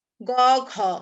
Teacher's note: বাতাস কিন্তু ঘয়ে বেশি বের হচ্ছে আর গয়ে কম বের হচ্ছে, এর জন্য এটা হচ্ছে অল্প প্রাণ।